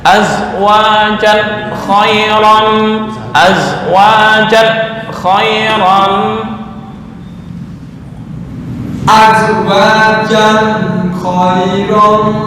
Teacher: Tanwin bertemu kha adalah idhar halki, idhar nggak boleh dengung.